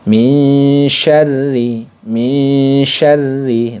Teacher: bunyi Nun sukunnya disamarkan ke huruf syin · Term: ikhfa Hakiki